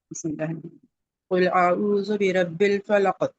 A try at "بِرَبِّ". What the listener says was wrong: برب نہیں برب موٹا کر کے پڑھ